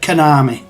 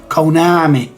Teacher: lazily pronouncing the O as an e or an A